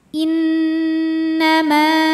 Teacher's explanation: Sebab ada alif sebelumnya baris fathah, maka panjang 2 harokat kalau berhenti. Innama, dibaca panjang 2 harokatnya hanya saat berhenti saja. · Karena nunnya bertasydid. Cara bacanya didengungkan, ditahan dengungannya kurang lebih 2 harokat. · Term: matobi'i zahiri, gunnah musyaddadah